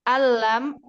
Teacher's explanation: Prosesnya masuknya itu sempurna. Nun sukunnya hilang masuk kepada lam. Di lam itu di atasnya dikasih tasydid. · Anlam tulisannya. Tetapi bacanya kan alam karena idgham bila gunnah. Nah, itu kan idgham bila gunnah itu masuknya kepada idgham kamil.